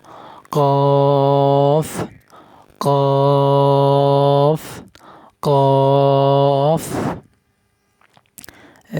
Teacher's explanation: কফ শক্ত করে উচ্চারণ করতে হবে, গোড়া উপর দিকে তুলে দিতে হবে।